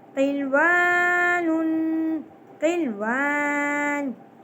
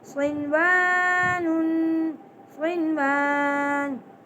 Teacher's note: اور یہاں پر دیکھیے نون ساکن کے بعد واو آ گیا ہے لیکن ہم نے یہاں پر بھی غنہ نہیں کرنا